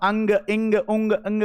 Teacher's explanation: नाक अगर आपने बंद कर ली तो आप अंग इंग उंग इंग कुछ नहीं बोल पाओगे